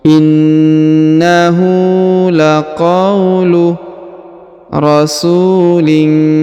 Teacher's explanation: Huruf su dipanjangkan dua harokat karena di depannya terdapat waw sukun.